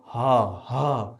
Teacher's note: ह सीधा कंठ से आवाज बाहर निकल जाएगा। कहीं जीव नहीं टकरा।